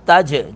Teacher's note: جیم ساکن پر قلقلہ کریں گے